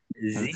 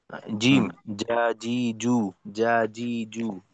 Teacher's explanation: জিহ্বার বিস আগা কোনোভাবে যেন দাঁতের সঙ্গে স্পর্শ না করে, বা তালুর সঙ্গে না, জিহ্বার মধ্যখান।